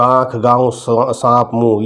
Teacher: अनुनासिक चंद्र बिंदु नाक और मुंह से आवाज आएगी